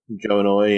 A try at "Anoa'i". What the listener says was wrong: I was going to say, I'm pretty sure it's not annoy. He annoys some fans. It's the Anoa'i family.